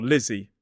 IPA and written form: ˈlɪzi (Lizzy)